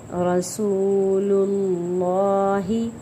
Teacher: را کو پر پڑھنا ہے کیونکہ را مفتوح ہے یعنی کہ را کے اوپر فتح ہے۔